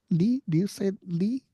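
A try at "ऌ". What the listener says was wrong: Lir. Lir. has a little bit of a R sound in it. It starts with a L. Lir.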